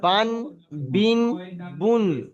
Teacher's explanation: আর তানবিনের আওয়াজটা নাকের মধ্যে যায়, তানবিনের আওয়াজটা একটু নাকের মধ্যে যায় · এই আওয়াজগুলো দেখেন একটু নাকে চলে যাচ্ছে